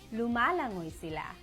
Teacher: L sound is focused more in the middle of the roof of your mouth.